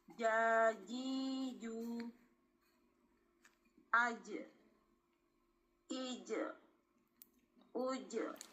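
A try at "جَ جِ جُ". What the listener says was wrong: Enggak usah ditekan, Bun.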